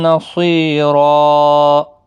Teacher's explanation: وقف کی صورت میں 2 زبر کو بدل کر ایک زبر کے ساتھ وقف کریں گے، الف مدہ بنے گا، ایک الف کی مقدار کے برابر کھینچ کر وقف کریں گے، را پور بھی پڑھا جائے گا۔